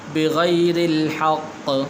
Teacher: ذلك بأنهم كانوا يكفرون بآيات الله ويقتلون النبيين بغير الحق یا کے نیچے کھڑی زیر ہے تو اس کو آپ نے لمبا کرنا ہے، بغیر الحق، را کے نیچے بھی زیر ہے تو اس لیے آپ نے موٹا نہیں کرنا ہے، اس کو باریک کر کے پڑھنا ہے